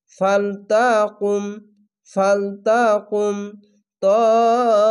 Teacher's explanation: ফালতাকুম, ফালতাকুম তাইফাতুম, এখানে ইদগামে বা গুন্না, মোটা চিহ্ন মাদ্দে লাজিম চার আলিফ টেনে পড়বেন